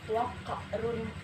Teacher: Selanjutnya waqarun wa huwa ada qaf yang terharokat sukun disebut qaf kalah sukun karena qafnya mati asli karena huruf sukun, bukan karena waqaf. Cara bacanya dengan dipantulkan waqarun. Setelah itu pada lafaz waqarun wa huwa ada dhammah tanwin bertemu dengan waw disebut idgham bigunnah.